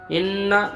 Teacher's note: आवाज़ को दोनों में एक अलिफ दार नाक में रोकना है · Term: नून मुशगुन्ना